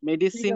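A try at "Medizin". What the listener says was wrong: উচ্চারণটা ভুল, কারণ মেডিসিন ওভাবে করে উচ্চারণ করে না, অনেকটা উচ্চারণটা এরকম মেডিসিন। হ্যাঁ, ড ড এটা হচ্ছে ড এর উপর চাপটা পড়ে। মেডিসিন এরকম আসে অনেকটা উচ্চারণটা।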